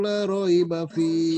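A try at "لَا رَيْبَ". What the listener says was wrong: Lanya panjang Pak. La.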